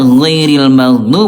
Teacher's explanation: Ini huruf ghain dia rokhawah. Ayah bunda rokhawah itu artinya lemah. Lemah ayah bunda yang membuat suaranya mengalir.